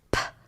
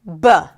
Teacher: There's the P, which is the voiceless consonant, because it's just air. And there is the B, which is the voiced consonant. So the air comes out.